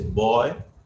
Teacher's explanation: in English you say boy so this B sound is voiced